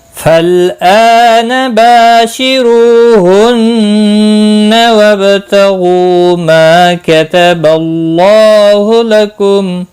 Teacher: نون مشدد پر غنہ ہوگا، با ساکن پر قلقلہ ہوگا